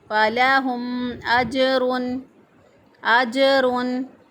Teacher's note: ہا ادا ہوگا، فلاہم اجرن، جیم جو ہے یہ ساکن ہے، ساکن حالت میں جیم کے اوپر قلقلہ ہوتا ہے